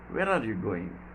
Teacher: w h questions also again in falling tone